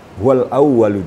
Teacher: ada tasdik di atas wau maka sedikit ada penekanan